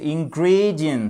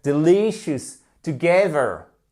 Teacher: Donc le stress, l'accentuation se fait sur la deuxième syllabe. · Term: accent tonique